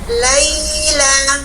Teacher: Jadi berdampingan ini ada fi matobi'i berarti yaknya harfu mad 2 harokat. Kalau ya layyinah 1,5 harokat maddimah ya. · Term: bacaan lin